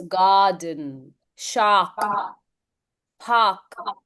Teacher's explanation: So bossy R sounds में R को बिल्कुल हम skip कर सकते हैं. Completely skip.